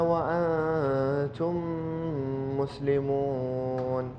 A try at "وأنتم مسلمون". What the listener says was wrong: بين الهمزة وأنتم مسلمون. أيوة، الهمزة دخلت مع الغنة. وأنتم مسلمون. لو تحققها ماشي.